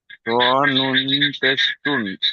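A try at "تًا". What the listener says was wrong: ত নুন নয়, তা নুন জাবার তান, তা দু জাবার তান, তা নুন জাবার তান।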